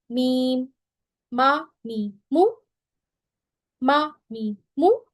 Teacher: मीम में हम जो है वो खुश्क हिस्से को, यानी ड्राई पार्ट्स के दोनों होंठों को लगाते हैं।